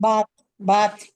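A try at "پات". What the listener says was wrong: नहीं नहीं, पात है। पे है, नीचे तीन नुक्ते हैं, पा हो गया, पे और फिर अलिफ फिर ते। पात। मेन नुक्तों से पहचान करनी है। अगर हम यहीं पे एक नुक्ता कर देते तो ये बात हो जाती।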